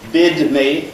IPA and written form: ˈbɪd mi (bid me)